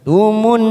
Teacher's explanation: Qallaqtumun, ada nun yang bertasdid warna pink, namanya bacaan gunnah. Kita tekan selama 3 ketuk.